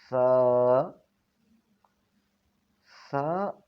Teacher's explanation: زبان کی نوک جب اوپر والے دو دانتوں کے نیچے والے کنارے پر لگے تو اس سے سا ادا ہوتا ہے، یعنی جیسے کہ ہم کوئی نرم چیز منہ میں ڈالتے ہیں یا کسی نرم چیز کو ہاتھ میں پکڑتے ہیں تو ایسا محسوس ہونا چاہیے جب ہم سا کو پڑھیں۔